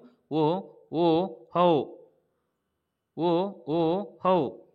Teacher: ಕಂಠೋಷ್ಠ್ಯದಿಂದ ಉಚ್ಚಾರಣೆ ಆಗ್ತವೆ ಅಂದ್ರೆ ಕಂಠ ಮತ್ತು ತುಟಿ ಭಾಗದೊಳಗೆ